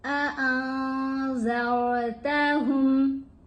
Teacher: कफ़रू सवाउन अलैहिम अअंज़रतहुम, नून के ऊपर हमने इहफा किया, रॉ को हमने पुर पढ़ना है, ज़ाल को हमने सॉफ्टली अदा करना है